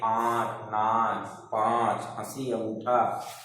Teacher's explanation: इसका उच्चारण मुंह और नाक दोनों से होता है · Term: अनुनासिक